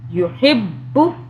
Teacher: لا، یا پیش یو، ہا با زیر حب، با پیش بو، با کی 2 مرتبہ آواز، ایک با کی ساکن ہوگی پچھلے ہا سے ملے گی تو دوسری با کی آواز پیش سے ملے گی